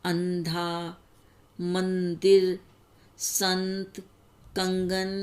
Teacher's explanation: अनुस्वार का उच्चारण करते समय हवा नाक से बाहर निकलती है